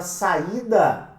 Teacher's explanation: Esse ato entre o A e o I configura para nós, né, uma acentuação pela regra dos iatos, porque você tem uma separação entre o A e o I, e o I tá sozinho na sílaba